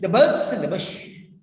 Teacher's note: birds and Bush will be pronounced loudly because those words should go into your brain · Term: stress